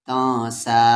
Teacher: یہاں پر نون ساکن کے بعد سین ہے تو اس لیے اس نون ساکن کی آواز کو چھپائیں گے، تو سین پہ کھڑا زبر سا تو سا۔